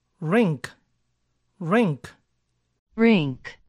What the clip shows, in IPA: rɪŋk